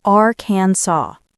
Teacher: It looks like it should rhyme with Kansas, but it doesn't. It's Aransaw. The final S is silent,